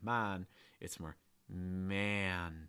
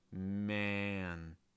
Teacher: You can feel your tongue sliding back, and then you get a heavy breath out of your nose before the N.